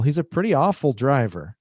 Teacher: If you put more emphasis on awful, he's a pretty awful driver. Then you're saying he's very awful.